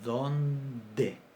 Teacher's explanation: cuando tenemos una nasal adelante, se oclusiviza